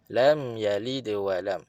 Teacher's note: mim rapat bibir dan automatik suara ada rasa di hidung